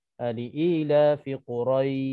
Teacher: Yang dipanjangkan di situ bukannya ra, yang dipanjangkan di situ ya mati. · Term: mad lin